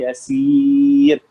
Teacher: را ساکن سے پہلے اگر یا ساکن آ جائے تو پھر را باریک ہی پڑی جائے گی